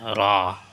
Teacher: রা জিহ্বার আগার পিঠ তার বরাবর উপরের তালু হইতে উচ্চারিত হয়।